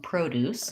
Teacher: i have first syllable stress and i use a clear o pro and then the deuce is shorter and relaxed